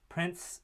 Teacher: prints is is pronounced without the T in which case it's a deletion